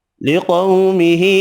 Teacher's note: قو واو لین ہے، چھوٹی مد تین الف کی مقدار میں کھینچ کر پڑھیں گے